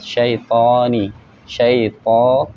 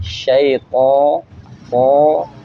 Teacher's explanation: Harus lebih tebal lagi, syaito, po, ya. Jadi lebih bulat suaranya itu, lebih bulat, lebih menebal. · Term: itbaq